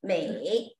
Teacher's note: So tone, going up, going down, then up.